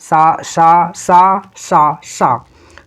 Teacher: तो इनको जब भी उच्चारित किया जाता है तो इसमें बहुत ही घर्षण उत्पन्न होता है ध्वनियों में, इसलिए इसको हम लोग उष्मीय वर्ण कहते हैं